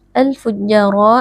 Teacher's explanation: dibaca dengan berdengung wa Inal fujjar alfujjaro alif lam alqamariah karena Alif lam bertemu dengan huruf qamariah yaitu haruf Fa cara membacanya alif lam dibaca sukun dengan jelas kemudian ja di sini ada Mad Thobi'i dibaca panjang dua harakat